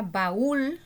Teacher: Es una palabra aguda porque el acento está en la última sílaba y se tilda aunque no termine en N o S.